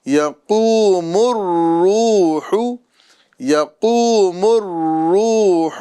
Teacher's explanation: میم کو پھر را سے ملائیں گے